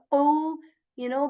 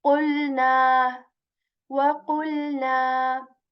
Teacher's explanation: Back part of the tongue touches the soft palate with strength. Heavy letter here. You will say قُ, by raising the back part of your tongue as well. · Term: cough